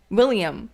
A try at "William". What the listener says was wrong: I feel like you're adding an extra I say like William. William.